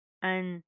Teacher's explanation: यहाँ पर हम इख्फा करेंगे, नाक के अंदर साउंड पैदा करेंगे, मोटा इख्फा होगा, क्यों, क्योंकि उसके बाद सौद मोटी हरूफ में से, ठीक है।